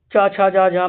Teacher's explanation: जीभ हमारी ऊपर तालु को टच कर रही है। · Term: च वर्ग